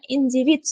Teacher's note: D talaffuzda so'zni oxirida tga almashar ekan.